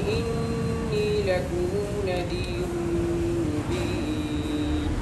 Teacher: جہاں بھی میم جمع ہوگا دونوں راویوں کے لیے اس میں صلہ کرتے ہیں، جبکہ میم جمع کے بعد والا حرف متحرک ہو